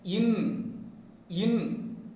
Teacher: See, the nasal in is produced by raising the tip of the tongue towards the upper teeth ridge and making a tight contact and sending out the air through the nasal passage, that is through the nose. That is, when the tip of the tongue is having a tight contact with the upper teeth ridge, the blocked air escapes through the nasal passage, that is through the nose